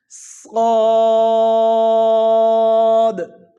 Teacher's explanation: پھر ادا کرتے ہیں اس کو صاد. اس کی سیٹی وہ بھی خیال کریں گے اور اس کی موٹائی میں بھی خیال کرتے ہوئے اس کو ادا کریں گے داہنی جبڑے سے زبان کو لگاتے ہوئے